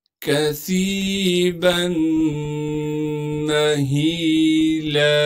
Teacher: با کو میم سے ملائیں گے غنہ کے ساتھ